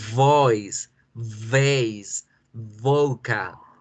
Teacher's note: Y ahora la V, la vibración en la garganta.